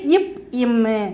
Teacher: மேலுதலும் கீழுதடும் பொருந்துவதால் பிறக்கிறது